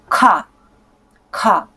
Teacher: Вот сюда вниз я ставлю ладонь под подбородок. И с придыханием, с таким выдохом, с волной воздуха я говорю «ка», «ка».